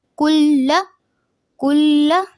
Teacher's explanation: لام کو 2 دفعہ پڑھیں گے کیونکہ شد والے حرف کو 2 بار پڑھا جاتا ہے